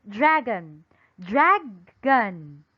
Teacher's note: listen to the vowel sound ah in the word dragon